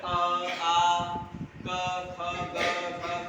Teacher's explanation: आ क ख ग घ कंठ से आवाज निकल रही है